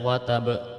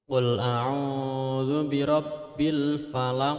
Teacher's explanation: harus ada pantulan qalqalahnya harus diperlihatkan dan ditekan karena itu termasuk qolqolah kubro